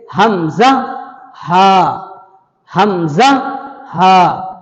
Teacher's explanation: شروع حلق سے حمزہ ہا،